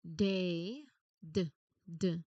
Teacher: Think of the word day. day d d You start with the tongue tip seal, add your voice, and then release into the vowel sound.